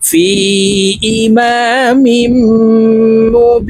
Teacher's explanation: মিম পেশ মু, বা ইয়া জের বি, নুন দুই জের নিন, মুবিনিন। বি এখানে তিন আলিফ টেনে নুনকে সাকিন করতে হবে, কারণ মধ্যে আরজি, মদের হরফের বামের হরফে ওয়াকফ হইলে মধ্যে আরজি তিন আলিফ টানিয়া পড়িতে হয়।